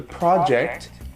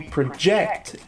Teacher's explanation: the project, the stress is on the first syllable, and project, the verb, it's on the second syllable